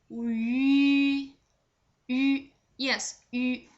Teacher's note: Its pronunciation is just like you are with the same tongue position as when you pronounce the final e, but the shape of the lips are the same as when you pronounce final u